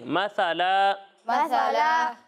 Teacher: मसाला आपने सा पढ़ा ऐसे, ठीक है, ये सा नहीं है, सा, ठीक है। सा में सीटी की आवाज़ नहीं आएगी